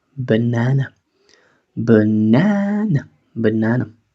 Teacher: reducimos la primera y la tercera porque las primera y tercera son sílabas débiles